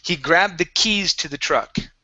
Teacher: long e on keys instead of kiss